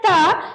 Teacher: तो मेरा जो दोनों दांत है उसके बीच में मेरा जीभ आता है।